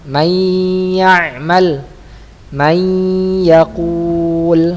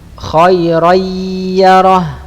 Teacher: Kemudian kita lanjutkan idgham bi gunnah ya, nun tanwin atau nun bertemu dengan salah satu huruf ya, nun, mim dan waw. Cara membacanya diidghamkan atau dimasukkan ke dalam huruf berikutnya dengan tempo gunnah yang dipanjangkan ya. Temponya 2 harokat kira-kira.